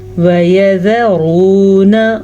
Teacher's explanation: را کو پر پڑھنا ہے، را پہ پیش ہے اسی لیے، اور یہ واو مدہ ہے